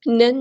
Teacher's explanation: نون پہ غنہ زمانی ہو رہا ہے، نون تشدید والا ہے تو ہم نے ایک الف کے برابر یہاں پہ رکنا ہے